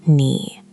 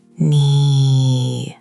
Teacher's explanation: Imagine your voice walking down into a valley and climbing back out. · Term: Tone 3